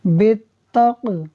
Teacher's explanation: قاف حروف قلقلہ میں سے ہے، ساکن ہے، خوب قلقلہ ظاہر ہوگا